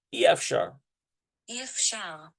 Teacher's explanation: If there was a patak, it would be IE, like a diphthong, but it's not. It's just plain E.